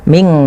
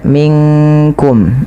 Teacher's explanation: Dia nunnya samarkan ke kaf, bukan minkum. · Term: ikhfa